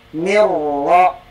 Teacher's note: yang terdengar ro, tidak lagi ada nun. Nah, itulah huruf yang membuat nun mati tanwin tidak lagi gunnah atau dengung atau ditahan 2 kali tasdid. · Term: idgham